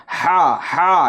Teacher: ये बड़ी हा है जो हल्क से अदा होगी